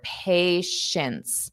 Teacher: So notice this T at the end is not pronounced. But neither is the first T.